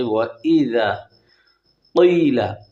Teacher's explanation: وَإِذَا قِيلَ یعنی کیلا نہ ہو، کاف نہ ہو، کتاب والی کاف نہ ہو، موٹی قوف زبان کی جڑ اوپر کے تالو سے ٹکر کھائے